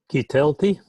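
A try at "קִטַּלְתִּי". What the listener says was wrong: Oh, the accent changes to ah. The accented syllable changes to ah.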